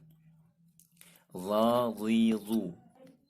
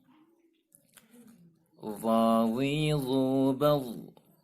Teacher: Makhraj huruf za adalah ujung lidah yang menyentuh ujung gigi seri atas. Ya, ujung lidah menyentuh bagian gigi seri bagian atas.